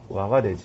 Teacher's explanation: 오와 아가 만나면 뭐가 돼요? 와가 되지. 단모음과 단모음이 만나서 이중모음이 되는 것. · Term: 이중모음화